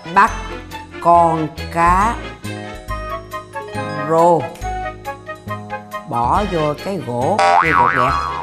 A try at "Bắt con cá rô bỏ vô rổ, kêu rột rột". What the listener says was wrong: Bỏ vô rổ chứ không phải là gỗ. Mẹ nói lại. Rổ.